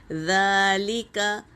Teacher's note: ذال آیا ہے، دونوں دانتوں کے بیچ میں زبان کی ٹپس ڈال کر ادا کریں گے